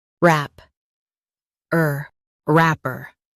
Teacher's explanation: Stress wrap and keep her light.